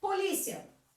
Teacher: E se eu for falar dos ditongos aqui, quem que é a vogal em polícia? É o A, que é forte. E quem é a semivogal? É o I, que é a metade do som. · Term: ditongo crescente